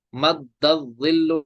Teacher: دال کو ہم جماؤ کے ساتھ پڑھیں گے، کیونکہ یہ حرف قلقلہ ہے، حرف قلقلہ مشدد ہو تو جماؤ سے پڑھیں گے.